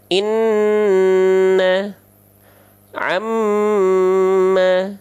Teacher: Kalau Nun dan mim ketika bertasdid dia ditahan dua harakat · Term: hukum gunah